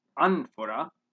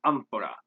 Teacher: spanish speakers will assimilate this sound to the labial dental place for more natural sounding amphora this is a little tricky to